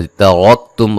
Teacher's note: रा को मोटा अदा करेंगे। मीम साकिन का यहाँ इज़हार है।